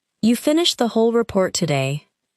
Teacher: Imagine someone says, you finished the whole report today. The word whole may receive strong stress, because the speaker is surprised that everything was completed.